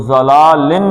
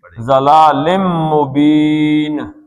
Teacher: ساتھ لگانا ہے، ضلالم، اب یہ لن نون ساکن کے بعد اگر میم آ جائے تو نون ساکن نہیں پڑھتے، کیا پڑھتے ہیں؟ میم پڑھتے ہیں ، تو ضلالن نہیں پڑھیں گے، ضلالم مبین، وہی دو حرکتیں